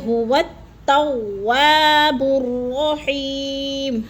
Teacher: واو کو تا مشدد کے ساتھ ملا کر پڑھیں گے، درمیان والا الف نہیں پڑھا جائے گا